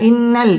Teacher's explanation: গুন্না করে পড়তে হবে পড়তে হবে এক আলিফ টান দিয়ে পড়তে হবে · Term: ওয়াজিব গুন্না